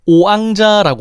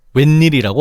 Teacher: 각각 왕 웬을 발음하기 직전의 입모양 즉 오나 우를 발음하는 입모양과 흡사한 상태에서 아나 에로 넘어갈 때 나는 소리가 바로 반모음우야. 반모음이와 마찬가지로 입모양이 바뀌는 과정에서 나는 소리기 때문에 정확하게 이거다라고 하기에는 불명확한 부분이 있어.